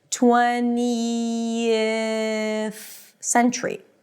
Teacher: You have to go through the transition between a th sound 20th, right? The tongue is out for the th and then you have to pull it in for the s sound. · So basically it's 20, then you end it with a high E, and then you drop your tongue a little bit to a relaxed I as in sit. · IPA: 'tweniəθ sentʃɹi